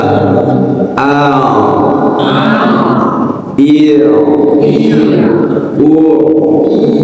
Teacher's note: Ain ini kan mahrajnya dari tenggorokan bagian tengah ya sama dengan ha.